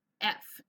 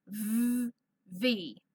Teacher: F, it's just the air that comes out. There's no vibration. However, it's the same formation of my mouth, but I have a voice here.